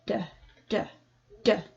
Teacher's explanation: the plosive D sound that creates an angry tone